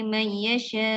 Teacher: yasha tu dia panjang 6 harakat. Mad wajib muttasil hamzah 6 harakat.